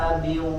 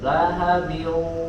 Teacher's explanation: yang tepat adalah suaranya ketika idgham di situ dimasukkan ke dalam hidung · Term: Idgham Bighunnah